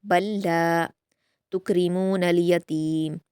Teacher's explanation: कल्ला, बल के बाद लाम पर तशदीद है तो बा को लाम से मिलाकर सख्ती से पढ़ेंगे